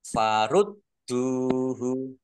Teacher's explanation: Kasroh tanwin bertemu dengan huruf fa, bacaan ikhfa dibaca samar-samar. Farud duhu dalnya dibaca dobel, ada tasdidnya. Biar tampak dobel maka ditekan. Farud duhu dal domah wawu sukun matobi'i panjang dua harokat.